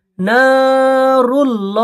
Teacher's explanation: না এক আলিফ টান হবে কারণ এটা আলিফ মাদ্দা। রুল্লাহ, আল্লাহর ডান দিকে পেশ এসছে, আল্লাহকে ল পড়তে হয়।